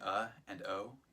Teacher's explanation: think of the expression someone makes when there's trouble that pause between uh and o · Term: glottal stop